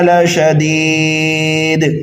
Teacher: ٹھیک ہے، تو اگر آپ نے لشدید پر وقف کر دیا تو یہاں پر جو ہے وقف بالاسکان ہو رہا ہے، جیسے کہ اوپر کئی ساری آیتوں میں آپ نے ابھی سمجھ لیا. دال کو ساکن کر دیں گے، قلقلہ کبیرہ بھی یہاں پر ہوگا، مد عارض کا قاعدہ بھی اپلائی کیا جائے گا.